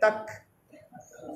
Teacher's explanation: Ini ikhfa hakiki. Tak disafir, dianginkan. Tak, jangan salah dengan tindakan qalqalah. Tak, tak, jangan kuat sangat. Sekadar angin ya.